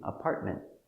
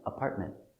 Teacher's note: And here we finish with NT, we don't hear the T, apartment. The tongue goes up a little bit, but does not make a T sound